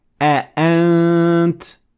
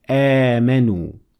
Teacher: because I have hamza one after the other, so I will have to say a. But in the second example, we have hamza followed by alif, and for this reason I'll have to extend it a little bit and say آمنوا.